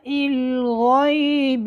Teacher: گلے کے ابتدائی حصے سے حرف غین ادا ہوتی ہے۔ یہ موٹے حروفوں میں سے ہے، یہ ہمیشہ موٹی پڑھی جائے گی۔